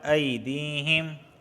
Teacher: یا ساکن سے پہلے زیر آیا ہے اس وجہ سے میں نے اسے کھینچ کے پڑھا ہے